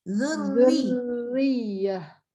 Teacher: Tambah ro. Ro-nya yang harokat kasroh. Tipis. Jadi semua tipis. Zurriyah gitu.